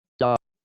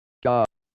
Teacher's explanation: made with the tongue pointed towards the back of the mouth the dental sound on one side of the continuum sounds like this dah it's a retroflex sound on the other side of the continuum sounds like this dah most native English speakers cannot distinguish these